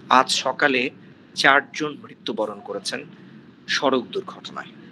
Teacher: এখন এই 4 জন মৃত্যুবরণ করেছে, এই 4 জন আমি এমফাসাইজ দিয়েছি।